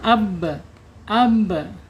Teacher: qalqalah ketika dia sukun akan memantulkan ya memantulkan suara